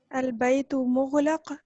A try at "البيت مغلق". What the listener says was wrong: غین پہ قلقلہ نہیں. البیت مغلق. مغلق.